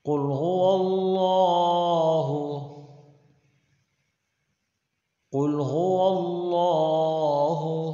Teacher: قوف کو موٹا کر کے پڑھیں گے اور لفظ اللہ کے لام کو موٹا کر کے پڑھیں گے